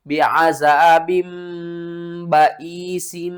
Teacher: با دو زیر بن کو آپ نے با دو زیر بم میں بدل کر پڑھنا ہے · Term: اقلاب